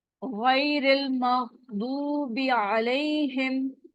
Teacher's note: یا ساکن ہے، اس سے پہلے والے حرف پر زبر ہے، تو یہ یا لین ہے، اس کو نرمی سے ادا کرنا ہے۔